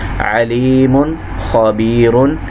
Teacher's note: نون تنوین کے بعد حروف حلقی آیا تھا، اس لیے ہم نے یہاں پہ کیا کیا ہے؟ اظہار